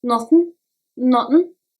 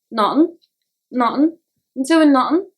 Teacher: in the word nothing, TH is barely pronounced